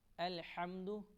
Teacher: یہ ہا حروف حلقی ہے، اس کو ہم حلق سے پڑھیں گے